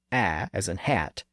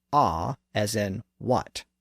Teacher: First, they're neighbors, both being located in the bottom part of the mouth, a being slightly higher and more forward, and ah being lower and further back · that lowest front vowel, a, as in hat, and this low central or back vowel, ah, as in what